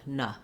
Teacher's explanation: our n e is no longer a clear vowel no longer long it's now the one that has the schwa sound and it sounds like na so just noticing that those two